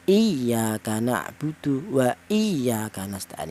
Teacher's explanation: Contohnya di surat al-Fatihah ada ya iya kanak budu itu lafal iya itu ada huruf yang bertaddid didahului hamzah yang berharakat kasrah itu cara bacanya dibaca nabr yaitu ada penekanan suara sedikit lebih tinggi